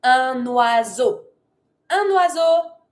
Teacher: because it starts with a vowel, I can take my N from un to connect it.